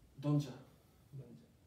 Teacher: Cuando la T y la J se unen. Que eso para nosotros en pronunciación es CH.